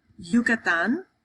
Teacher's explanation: If it's in the beginning of a word, depending on the accent, it's going to sound like a Y, or some people actually pronounce it like a J.